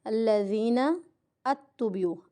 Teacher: نتبعوا، یہاں پہ ہماری غلطی آتی ہے، الذین اتبعوا، ات نہیں پڑھنا، نون کو تا کے ساتھ ملانا ہے